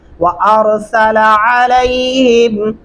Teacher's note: اکثر لوگ ایک اور غلطی کرتے ہیں، وارسلا علیہم پڑھتے ہیں، لام کو لمبا کر دیتے ہیں اور عین کی جگہ الف ایڈ کر دیتے ہیں